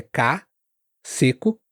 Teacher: O C também não tem esse aspirado, é K, seco